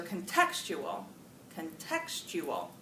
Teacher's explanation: where's the stress on that word on the second syllable